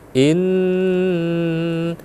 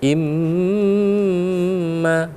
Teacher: Ketika dia ada tasydidnya, maka dia dibaca wajibal gunnah. Artinya kita wajib mendengungkannya.